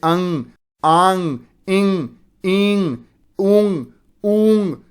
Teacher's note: वे स्वर जो मुख के साथ-साथ नाक से भी बोले जाएं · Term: अनुनासिक स्वर